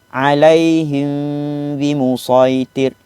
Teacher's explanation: Di antara dua bibir atas dan bawah kita itu adanya lubang nafas boleh keluar sedikit. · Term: ikhfa syafawi